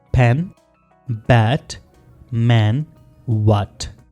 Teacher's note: तो ये चारों जो साउंड्स हैं ये बाइलेबियल हैं, दोनों लिप्स के साथ प्रोनाउंस होते हैं।